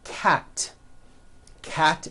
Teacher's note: cat ends with an unvoiced t